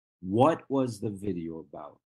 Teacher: notice that my intonation drops